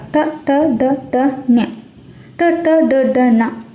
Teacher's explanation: ಇದಿಷ್ಟು ನಾಲಿಗೆಯ ಮೇಲಿನ ಅಂಗಳಿಗೆ ಟಚ್ ಆಗುತ್ತೆ ಇದನ್ನ ನಾವು ಮೂರ್ಧನ್ಯ ಅಕ್ಷರ ಅಂತ ಹೇಳ್ತಿವಿ ಮತ್ತೆ ಶಿರಸ್ಸನ್ನು ಸಹ ಇದಕ್ಕೆ ಉಪಯೋಗಿಸಿ ಉಚ್ಚರಿಸುವಾಗ ಶಿರಸ್ಸಿನ ಸಹಾಯವನ್ನು ಸಹ ತೆಗೆದುಕೊಳ್ತಾ ಇದ್ದೇವೆ